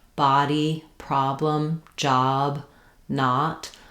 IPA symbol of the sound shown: ɑ